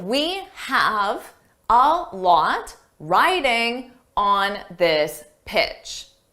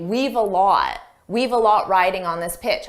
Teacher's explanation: notice when I said the sentence fast I did not contract we have